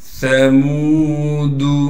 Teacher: ثمود سا کو بالکل باریک کر کے نرم کر کے پڑھنا ہے۔ میم کے بعد واو مدہ ہونے کی وجہ سے میم کو 1 الف کی مقدار کھینچیں گے